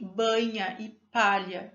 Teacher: o articulador ativo é a parte médio da língua o articulador passivo a parte final do palato duro · O som é produzido com a parte central da língua contra a parte central mais alta da abóboda palatina, indo até o final do palato duro. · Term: palatal